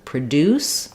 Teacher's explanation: Produce, stretched it. Produce, not stretched, stressed on pro.